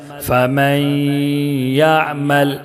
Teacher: اس میں ادغام ناقص ہوگا غنہ کے ساتھ پڑھیں گے